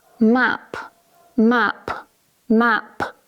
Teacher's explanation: you'll notice that I can move the paper with my mouth when I pronounce that final p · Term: aspiration